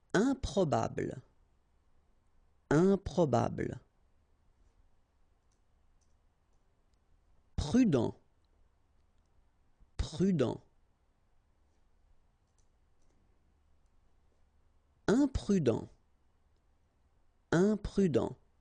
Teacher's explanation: when you add this EM at the beginning of all the words, you will get the nasal sound